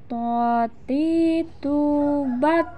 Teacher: ketika melafalkan huruf to dalam keadaan mati, suaranya terdengar mantul.